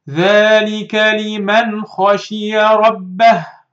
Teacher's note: Read this نون without any hiding, any merging, without any غنة. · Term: إظهار